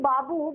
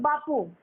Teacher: অর্থাৎ পটা হয়েছে অঘোষ ধ্বনি